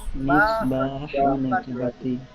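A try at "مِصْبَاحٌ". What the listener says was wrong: সাদের উচ্চারণটা একটু মোটা করার চেষ্টা করবো। মিসবাহুন, একটি বাতি। জি, মিসবাহুন, একটি বাতি।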